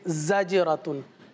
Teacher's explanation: जीम है, साकिन है, कलकला किया जाएगा। रा है, रा पर ज़बर है, रा को पुर पढ़ेंगे। · अब जैसे जा है, जा की अपनी अदायगी है, सीटी के साथ अदा होता है। जीम है, साकिन है, कलकला किया जाएगा।